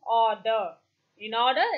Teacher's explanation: soft palate to a height between half closed and half open the lips are rounded it is a long vowel · A is thus a back rounded vowel between half closed and half open. That is, the tongue will be in the center, neither on top, neither at the bottom. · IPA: / ɔːd ə /